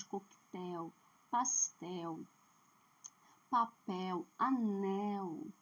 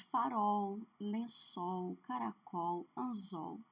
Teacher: É a consoante L. O L ele tem um poder de trazer a tonicidade para a última sílaba.